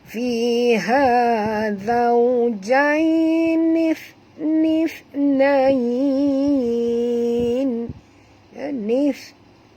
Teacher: Ini huruf tha ya. Tha ni tidak termasuk dalam huruf-huruf yang berdesir angin seperti huruf sin ya.